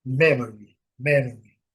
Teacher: a comá, o Y bem pronunciado. Y no final, gente, tem que ser bem bem destacado. É o som de I bem destacado.